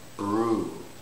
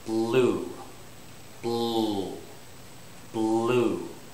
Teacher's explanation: So with the R, the air will escape through the front, but for blue, it escapes out through the sides.